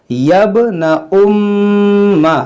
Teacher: میم مشدد ہے، اس میں غنہ کریں گے